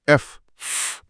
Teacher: పై పళ్ళు కింద పెదవికి తగులుతున్నాయి.